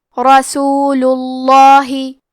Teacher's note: لفظ الجلالہ مطلب کلمت اللہ کے لام کا حکم ہے تفخیم تو ہمیں حرف اللام کو موٹی آواز میں پڑھنا ہے